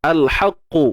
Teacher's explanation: Huruf qaf dia takkan berlaku qalqalah lah. Melainkan kalau kita berhenti kan, tu cerita lain lah.